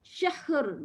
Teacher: Tak boleh ya. Jadinya kita nak berhenti syah dulu betul tapi kena bunyi ra sikit